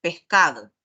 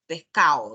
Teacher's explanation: puede pasar esta característica en cualquier zona pero en la costa en un tiempo estuvo muy marcado el el omitir la letra d